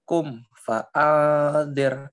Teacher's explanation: baca angnya lebih lama dikit ya, ikhfa